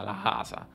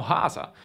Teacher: Al posto di dire Casa i fiorentini pronunciano Hasa, con un’H dura e gutturale. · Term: gorgia toscana